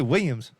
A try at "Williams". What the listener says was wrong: There's L's there, dog.